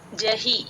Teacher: అది హి కి దీర్ఘం పెట్టకూడదు